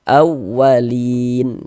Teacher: Jadi kalau kita membaca Al-Quran bertemu dengan huruf ya sukun, ada huruf ya ada tanda sukun, sebelumnya ada harokat kasrah, maka huruf yang memiliki harokat kasrah dibaca panjang sehingga li dibaca panjang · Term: mad arid li sukun